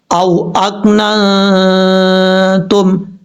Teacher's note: یہاں پہ نون ساکن کا اخفا ہو رہا ہے، ایک الف کی مقدار غنہ کر کے پڑھیں گے. او اکنا تم، اس طریقے سے.